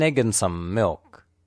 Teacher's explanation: egg and milk are stressed the words and and and some are unstressed spoken lightly and quickly